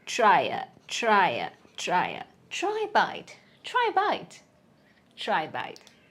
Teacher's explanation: When a vowel sound comes after a vowel sound, it becomes y.